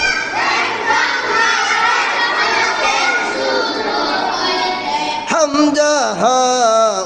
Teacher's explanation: 1 নং মাখরাজ হলকের শুরু হইতে। হামজা হা উচ্চারিত হয়।